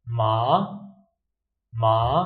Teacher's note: second tone from low to high